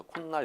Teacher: 니은이 하나가 이렇게 덧생깁니다. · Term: 사이소리 현상